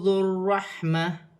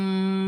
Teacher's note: واو ساکن سے پہلے پیش ہے واو مدہ بن رہی ہے. ذو الرحمہ را مشدد ہے جماؤ کے ساتھ ادا کیا جائے گا. ذال کو را کے ساتھ ملا کر پڑھا جائے گا.